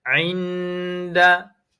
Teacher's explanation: Jadi bacaan dalam Quran inda itu kita kena dengung. Inda dua harakat. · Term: Ikhfa hakiki